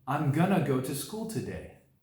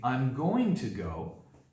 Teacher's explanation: the ending vowel in the word two has been reduced to an O sound which provides for a very smooth and fast transition to the next word